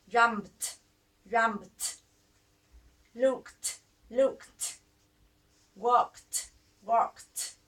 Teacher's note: if a word ends in unvoiced consonant, add an unvoiced t.